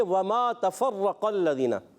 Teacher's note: راہ کو پر پڑھیں گے، کیوں؟ کیونکہ راہ کے اوپر زبر ہے